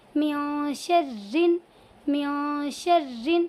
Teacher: یہاں پر را کے نیچے دو زیر کی تنوین ہے اسی لیے اس را کو باریک پڑھیں گے